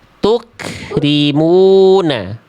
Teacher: Jangan dipantulkan. Jangan tuk tapi dipercikkan. Jadi yang keluar udara